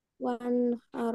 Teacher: ইজহারের হরফ। নুন সাকিনের পরে ইজারের হরফ হা আসছে, এই জন্য আমরা স্পষ্ট আকারে পড়বো